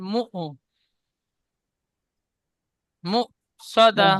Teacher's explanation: হামজার উপর সাকিন থাকলে সাকিন যুক্ত হামজাকে একটু ঝাটকা বা ধাক্কা দিয়ে পড়তে হয়, সেজন্য করে মিম হামজা পেশ মু সদা।